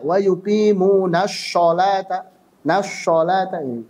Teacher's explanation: mengucapkannya dengan suara menyerupai shin tebal